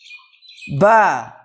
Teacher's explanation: দুই ঠোটের ভিজে অংশ থেকে উচ্চারিত হয় বা